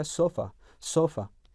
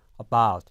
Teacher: 강세가 들어가 있지 않은 모음에서 약화되었을 때 사운드가 나오는데 그러한 발음을 말합니다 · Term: 슈아